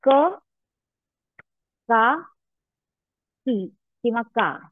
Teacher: क ऱ्हस्व उच्चार म्हणजे एकच मात्रा. का दीर्घ उच्चार, त्याच्या डबल 2 मात्रा. आणि का 3 मात्रा. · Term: ऱ्हस्व, दीर्घ, प्लुत